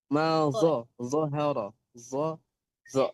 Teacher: Zha terbaca zha harus dibaca tebal karena sifat hurufnya idhbaq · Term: idbaq